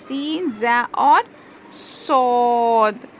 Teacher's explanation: रूफे सफीर है इसमें हमको विसलिंग की आवाज आएगी सीटी की आवाज आएगी · سین، ز اور صاد، یہ 3 حروف صفیر ہے۔ اس میں ہم کو وسلنگ کی آواز آئے گی، سیٹی کی آواز آئے گی